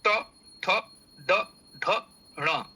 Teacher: ये मूर्धा स्थानी है अर्थात मूर्धन्य ये वर्ण है